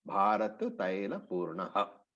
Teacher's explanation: the visarga was pronounced as with the full ha, the aspiration